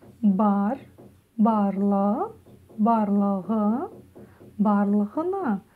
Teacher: Первое слово барлығына. Ударение на а, барлығына на последнюю а